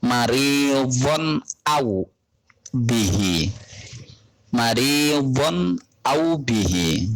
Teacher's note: Jadi tanwin bertemu dengan hamzah dibaca jelas. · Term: idhar